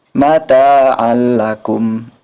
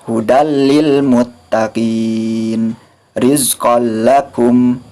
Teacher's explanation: idgham bilagunnah itu memasukkan tanpa disertai dengan ghunnah Jadi dibacanya secara cepat hampir sama dengan izhar tetapi bukan izhar